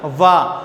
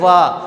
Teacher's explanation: जब भी हम व बोलेंगे तो हमारे दांत जो है नीचे वाले लिप के टच होगा व। जैसे हम उच्चारण करेंगे व, तो इनका उच्चारण स्थान हो गया एक तो दंत और एक ओष्ठ, क्योंकि जब उच्चारण करेंगे व तो दांत जो है लिप्स के टच होते हैं। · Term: दंतोष्ठ